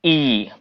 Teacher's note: अब तालु में जीभ के बिचला भाग सटैत छै कथी में तालु में एकदम ऊपर के जे बिचला भाग अछि